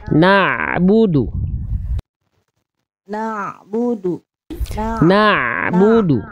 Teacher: huruf Ain itu punya sifat tawasud jadi tengah tenggorokan dari tengah tenggorokan dia punya sifat sedikit mengalir suaranya